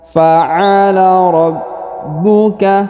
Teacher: huruf ba berharokat tasdid, maka kita tahan dan kita tekan.